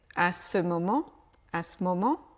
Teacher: Le E de ce disparaît